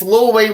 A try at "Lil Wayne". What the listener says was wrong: It's not Little, it's Lil.